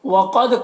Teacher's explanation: قاف کو پر پڑھیں گے، دال میں قلقلہ کریں گے